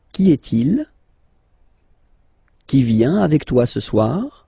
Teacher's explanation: If you pronounce them normally, remember that you will have to raise your voice a little bit at the end of the question